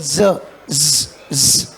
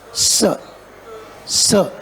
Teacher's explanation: in Z you have vibration and in s you do not have any vibration